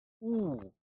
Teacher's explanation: back, high, rounded vowel sound